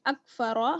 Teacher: रॉ जो है यहाँ पर पुर पढ़ी जाएगी क्योंकि जबर है